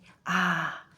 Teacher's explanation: Now say ah no H. Your throat feels open and relaxed. No constriction, no friction. This is what happens when you drop the H.